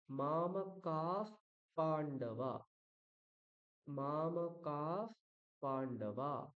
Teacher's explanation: যখন বিসর্গের পরে পকার বা ফকার থাকবে সেই বিসর্গটাকে আমরা কি করব, ফ উচ্চারণ করব